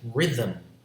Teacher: words like rhythm has a syllabic em